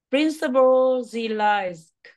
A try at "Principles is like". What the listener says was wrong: Sau chữ G nó có một chữ Z nữa nha. Principles is like.